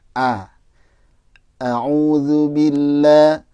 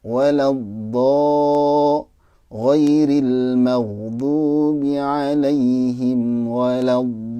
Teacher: Jadi yang bunyinya A itu fathah tipis. Kalau yang bunyinya seperti O ya, itu fathah tebal.